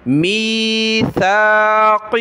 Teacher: من بعد میثاقہ، میثاق، قاف زرقی، ہا کھڑی زیر ہی. میثاقہ، سا پر زبان نکالیں اور قاف کو ہم نے موٹا کرنا ہے